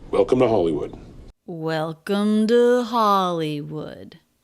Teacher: the pitch goes up to peak on the stress syllable of Hollywood before the voice comes back down